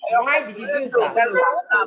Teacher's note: At the end of that question, your voice should fall. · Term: falling intonation